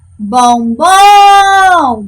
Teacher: a sílaba tônica que foi a última da palavra ela é classificada de oxítona